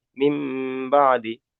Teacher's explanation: নুন সাকিনের পরে বা এসেছে। তাই নুন সাকিনকে মিমের দ্বারা পরিবর্তন করতে হবে।